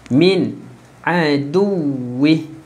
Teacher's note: Okey, nun ada sukun, tak ada syarat. Kita jelaskan je nun tu. Tak perlu menggunakan syarat.